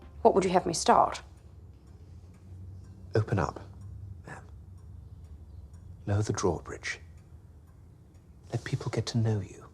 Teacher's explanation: the actors were instructed to barely let the words slip out between their teeth to achieve this unique sound